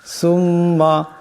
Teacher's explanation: মিমের উপর তসদিদ আছে, মিম মুশাদ্দাদের একারে পরিমাণ গুণ্য হবে